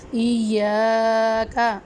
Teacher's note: ایاک، جی ادھر الف مدہ کا قاعدہ ہوگا، یا کو ہم ایک الف کی مقدار میں لمبا کریں گے